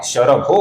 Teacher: इसके आगे भ ये मृदु व्यंजन आने के कारण विसर्ग का ओ हुआ है, शरभो हुआ है।